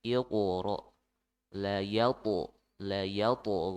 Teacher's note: Dan ada yang ditebalkan dan ada yang ditipiskan, ya. Yang ditebalkan ada 2 huruf, ya, huruf to dan huruf qaf